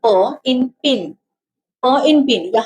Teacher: So P when pronouncing P in pin P in pin vocal do not vibrate P simply lips. So the airflow is stopped by the both lips because we have said so lips are touching each other the voice is remain inside the mouth. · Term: Bilabial voiceless